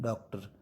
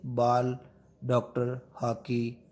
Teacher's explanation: डॉक्टर बोलते हैं, तो ना तो ओ बोलते हैं और ना आ बोलते हैं, डॉक्टर। तो ये आ और ओ के बीच की ध्वनि है, जैसे बाल, डॉक्टर, हॉकी आदि।